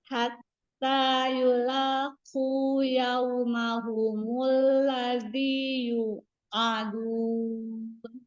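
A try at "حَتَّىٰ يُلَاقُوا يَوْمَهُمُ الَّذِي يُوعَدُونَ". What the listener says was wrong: Iya, masih PR ya huruf ainnya. Ya, huruf ain ya, sering-sering latih atau murojaah huruf ya.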